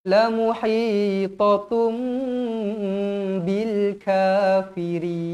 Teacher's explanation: Huruf mim ekonya ke bawah bertemu dengan huruf ba, hukumnya iqlab. Iqlab dibaca dengung dua harakat. Bibir dirapatkan.